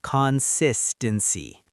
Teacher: That sis part needs to pop out.